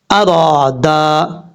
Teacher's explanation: را اور دال دونوں کے آگے الف ہے، ایک ایک الف کی مقدار اس کو لمبا کریں گے